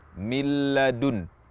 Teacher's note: huruf lam murni huruf lam murni tanpa gunah sama sekali milladun jadi huruf nun hilang Tidak dibaca sama sekali dan yang kita baca adalah huruf lam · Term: Idam Bil gunah, idgham bila gunnah